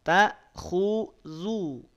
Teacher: Saat zal, hati-hati tipisnya dijaga. Jangan naik pangkal lidahnya.